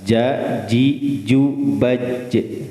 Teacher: ja itu di tengah-tengah lidah. Itu beda ya, makhrajnya.